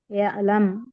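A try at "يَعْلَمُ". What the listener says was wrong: அப்படின்னு கட் பண்ண கூடாது. யாலம். அந்த யஅலம் அப்படின்னு கட் பண்றீங்கல்ல, கட் பண்ணா அது ஹம்சா சுக்குன் ஆயிரும். இப்போ இந்த இடத்துல பாத்தீங்கன்னா ஹம்சா சுக்குன் இருக்கு. இக்ரா இக்ரா அந்த இடத்துல கட் பண்ணும். இக்ரா அது ஹம்சா சுக்குன். இது ஐன் இங்க கட் பண்ண கூடாது. யாலம். மாலம் யாலம்.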